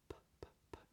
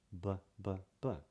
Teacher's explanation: P, P, P. Just air, B, B, B. You can't say a B unless you release a little bit of sound after it.